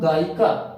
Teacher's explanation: ऐसा लगता है या को हम इ की तरह उच्चारित कर रहे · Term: अर्ध स्वर